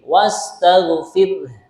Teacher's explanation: Ya, jadi sebagian ulama memberikan contoh cara mengucapkan ro yang tipis. Nah, seperti orang senyum. Nah, bibirnya ini ditarik, yang kanan ke kanan, yang kiri ke kiri.